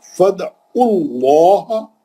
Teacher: فد دال پہ پہلے اچھا خلخلہ کریں گے · کیوں؟ لام جلالہ سے پہلے عین پہ پیش ہے، موٹا پڑھیں گے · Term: خلخلہ صغرا